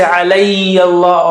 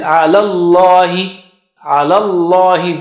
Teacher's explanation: Just jump from lam to the word Allah.